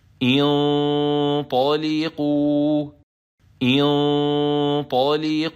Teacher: As it is Fatha, we will assign Kasra to Hamzat-ul-wasl. Then, when we stop at the end of this word, we stop with Waw Mad 2 beats long, and the Alif with a circle on top is always silent.